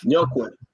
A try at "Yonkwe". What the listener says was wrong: It's YOUNQUOI. Yonkwe. Yes, Andrew Young. Except that, yeah, Yonkwe. No N.